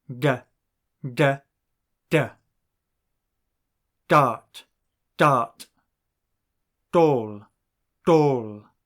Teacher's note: mouth just behind the teeth when sounding the klling on D the tongue touches the roof of the mouth a little further back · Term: Klingon D